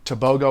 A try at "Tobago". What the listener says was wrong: It's actually Toboho. Yeah, you don't pronounce the G as a G, you pronounce the G as an H.